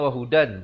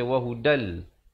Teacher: Asalnya wahudan, tapi di sini kena baca wahudal. Terus masuk di dalam lam. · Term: idgham bila gunnah